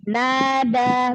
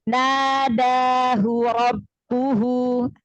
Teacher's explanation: Aliran suaranya itu ditahan biar jangan memantul gitu, ya. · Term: rokhwah